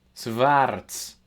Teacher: like an in-between of like a W and a V